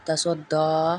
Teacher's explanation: تا زبر تا، سواد زبر دال سود، دال کھڑی زبر دا، تسودا، یہاں پہ قلقلہ ہو رہا ہے، دال آئی ہے